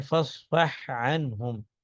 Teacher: ہا اور عین قریب المخرج ہے لیکن پھر بھی ادغام نہیں ہوگا